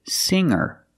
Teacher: the G is not pronounced with a hard G sound singer is not correct we say singer make a nasal sound